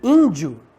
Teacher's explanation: esse primeiro e é nasal é uma vogal nasal